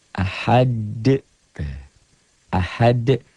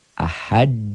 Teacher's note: Jadi ini tuh asalnya dhammah tain menjadi sukun bukan dalam tulisan tapi dalam bacaan. Ahad bacanya ada e-nya. Kayak bola yang mantul jatuh tidak langsung diam, mengeper, mengembal. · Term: qalqalah